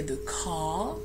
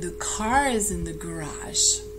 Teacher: in British English, the R that's at the end of the word is never pronounced unless you go on to pronounce in a word that starts with a vowel